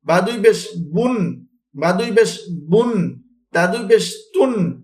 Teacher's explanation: একটি বিষয় আমরা সকলে খেয়াল রাখবো, আমরা পেশওয়ালা হরফের উচ্চারণ করার সময় অবশ্যই আমাদের ঠোঁট যেন গোল হয়, দুই ঠোঁট আমাদের শুয়ের মাথার মতো গোল হবে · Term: ঠোঁট গোল